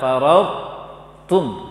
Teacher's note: Sifat qalqalahnya hilang, tebalnya tetap ada. Jadi baca tebal to, baru baca ta tanpa qalqalah. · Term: idgham naqis